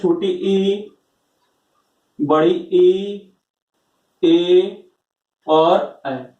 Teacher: इन चारों स्वरों का जब हम उच्चारण करते हैं तो हमारी जीभ का जो आगे वाला हिस्सा होता है उस पे एक हम लोग दबाव महसूस करते हैं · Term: अग्रस्वर